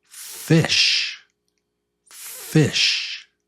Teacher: It's just air on your teeth and lip. · On your teeth, on your bottom lip. So it's no voice. No voice. It's just air.